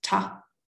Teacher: Falling tone on a short vowel, ta, run with a singular subject.